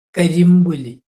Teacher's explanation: കരി പ്ലസ് പുലി, പായയുടെ അനുനാസികമാണ് മാ വരും അവിടെ.